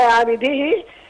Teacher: العين مرققه والباء مقلقله